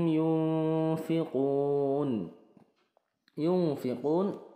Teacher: yunfiquun ini ikhfa nun sukun bertemu Fa